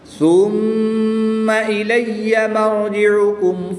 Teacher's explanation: میم مشدد میں ہمیشہ غنہ ہوتا ہے تو یہاں پر غنہ کر کے پڑھیں گے